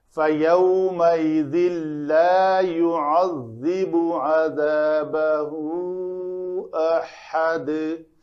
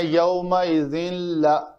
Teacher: فیو واو لین ہے، تنوین کے بعد لام آ رہا ہے تو ادغام کامل ہوگا، یعنی تنوین کی نون کی آواز بالکل نہیں آئے